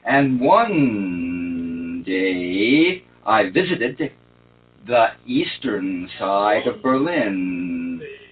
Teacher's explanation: now I'm not going to play the N in and